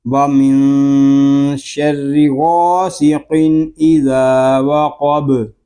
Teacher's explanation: وقف میں با ساکن ہوگا، پھر با ساکن میں ہم قلقلہ کریں گے